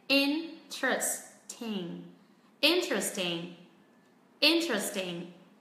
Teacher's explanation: người bản xứ nói nhanh thì nó sẽ rút xuống còn 3 âm tiết